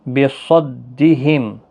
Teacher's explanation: صاد حروف مستعلیہ ہے، پر پڑھا جائے گا